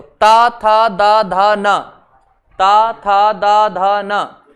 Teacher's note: अब जैसे ही बोलेंगे तो जीभ दांतों से टकराएगी, और मानो दांत नहीं हो तो जीभ आगे आ जाएगी।